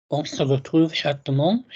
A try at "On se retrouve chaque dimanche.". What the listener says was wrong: No, you're still articulating too nicely. So you've got this cute little lisp thing that you've got, which is very sweet, and you have got a background and a life story of thinking you need to compensate for that.